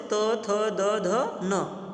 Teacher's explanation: यांचा उच्चार करत असताना आपली जीभ आहे ती कुठं चिकटते दातांना चिकटते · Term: दंत्य वर्ण